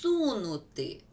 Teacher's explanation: Ми чуємо подовжений с